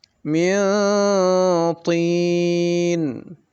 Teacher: Nun sukunnya dibaca samar, kemudian samarnya digunakan ya, didengungkan 2 harakat lebihkan sedikit. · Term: ikhfa kubro